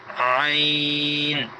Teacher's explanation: حلق کے درمیان میں ابری ہوئی ہڈی ہے، اس کو دبا دیں گے تو عین ادا ہوگا۔ حلق کے 3 حصے ہیں، اوپر والا، درمیان والا اور نیچے والا، تو درمیان والے حصے سے یہ عین ادا ہوگا۔